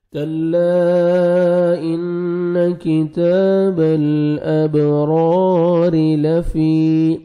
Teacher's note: را کو آپ نے موٹا کرنا ہے اور الف مد ہے، 1 سیکنڈ را کو کھینچنا بھی ہے. را کے نیچے زیر ہے، را کو آپ نے باریک پڑھنا ہے.